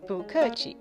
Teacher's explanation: if the word after it starts with a falling tone, then 不 is pronounced with a rising tone